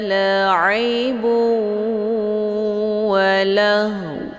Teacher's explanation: Cara bacanya, harokat tanwin zummah dileburkan ataupun dimasukkan ke dalam huruf waw dengan cara ditekan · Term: idgham bi gunnah